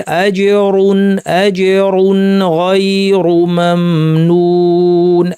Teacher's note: নুন সাকিনকে স্বাভাবিক দৈর্ঘ্যে রেখে স্পষ্ট করে পড়লাম, এটার নামই হচ্ছে ইজহার। আজরুন গায়রু মামনুন, এখানে দুই পেশ আছে।